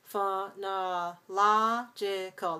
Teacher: That's five syllables. We stress the third syllable, the third syllable.